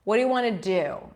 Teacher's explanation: in this case want is not stressed the do is stressed